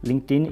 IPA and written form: lɪŋktˈɪn (LinkedIn)